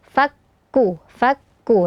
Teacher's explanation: sudah ada nafas yang keluar dari huruf Kaf